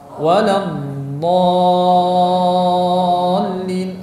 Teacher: Lidah terdorong sedikit ke depan hingga menyentuh pangkal gigi seri atas, yang mana dorongan tersebut disebabkan oleh udara yang ada di belakang lidah, ya, dan terdorongnya lidah ke depan sedikit ini menimbulkan suara dan memakan waktu, memakan durasi dari waktu. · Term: istitalah